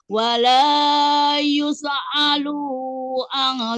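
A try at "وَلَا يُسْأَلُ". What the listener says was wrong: Jangan. Alu itu panjang. Wala yus'alu an. Lu'an ya.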